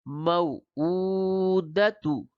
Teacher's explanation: تو اس کو جلدی دال اور تا کو جلدی ادا کریں گے. حمزہ الٹا پیش ہے، واو مدہ کے برابر ہوتا ہے، اس کو کھینچ کر پڑھیں گے، اور یہ واو اس کو نرم پڑھیں گے.